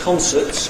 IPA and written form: ˈkɒnsəts (concerts)